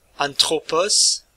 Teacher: prononciation te, accompagnée d'une aspiration